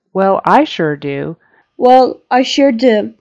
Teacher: we would probably emphasize and go higher and louder on the word I because we're contrasting I to you